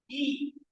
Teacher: The long vowel E is a unrounded front vowel. It is produced with the front part of the tongue.